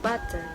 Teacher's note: your tongue is producing a tap sound there rather than a full stop